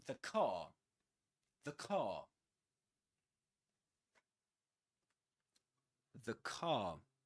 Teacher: if the next word begins with a consonant sound like the car, the car, you say the you pronounce it with a schwa sound